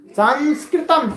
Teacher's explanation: अनुस्वार है, न की है न म की है। अनुस्वार है, अनुस्वार अपना अलग स्थान है अनुस्वार का।